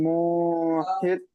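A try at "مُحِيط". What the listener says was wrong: ইয়া মাদা টান, না ইয়া মাদা টান দিতে হবে, অত শর্টে ছাড়লে হবে না। মুহিত। জি মুহিত। এটা কোন ছেড়ে দিতে হবে আওয়াজকে, মুহিত। জি না, টান দিতে হবে ইয়া মাদা, মুহিত। জি এটা আপনার ইয়া মাদা, তো ইয়া সাইনে ডানিয়ে জের এসছে, তো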